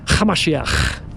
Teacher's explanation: You have to add a little bit of a throaty little ch.